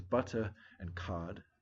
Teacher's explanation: dialect that deletes ours that are not followed by a vowel so they would pronounce these words as butter and cod and without an R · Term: non-rhotic